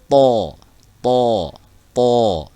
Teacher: Mirip dengan huruf T, tapi dia dibaca tebal. Pangkal lidahnya, bagian tengah lidah ke belakang, angkat ke atas. To, to, to ya. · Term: huruf to